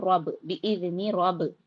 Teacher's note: را پر زبر ہے، را کو پر کریں گے